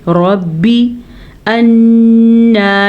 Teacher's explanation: انا نون کا غنہ بھی ادا کرنا ہے اور نون کی شد بھی ادا کرنی ہے